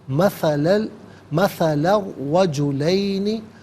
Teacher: را پر زبر ہے، را کو پر کر کے پڑھیں گے